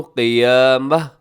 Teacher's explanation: قیامتی وقف کریں گے تو قیامہ ایسے ہو جائے گا